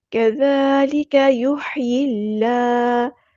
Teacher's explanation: ہا کو ہم نے وسطی لیکن مڈل تھروٹ سے ادا کرنا ہے، یا کو ہم نے لام کے ساتھ ملا دینا ہے، حمزۃ الوصل ہمارا ڈراپ ہو جائے گا۔ · اللہ کا جو لام ہے یہاں پہ باریک پڑھیں گے، اس میں جلالہ ترقیق ہو رہا ہے